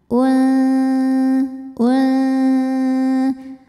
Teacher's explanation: ikhfa ausat sebab ada nun sukun menghadapi huruf Zai cara bacanya bunyi nun sukun disamarkan menuju makhraj huruf Zai disertai bunyi dengungan UN UN bunyi samar dan dengungnya dengungannya sama ya karena Zai